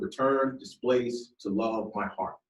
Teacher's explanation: It's called iambic pentameter, okay? Iamb, foot consisting of an initial unstressed syllable followed by a stressed one.